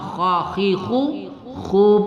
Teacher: pada makhraj halqi ya, halqi bagian depan